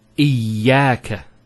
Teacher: Notice the ya gets a double vowel because of the shadda there. Iyaka. It's not iyaka, iyaka.